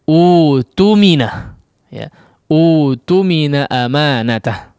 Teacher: Namun apabila kita memulai dari kata ini atau semisalnya ya, yaitu hamzah pertama berharakat dhammah, hamzah wasal yang kita maksud ya, dan hamzah kedua bertanda sukun, maka hamzah yang kedua diganti menjadi waw mad ya, waw huruf mad, sehingga termasuk juga dikatakan atau dalam kategori mad badal dan dibaca menjadi utumina ya, utumina amanatah ya. · Jadi hamzah sukunnya hilang ketika kita memulai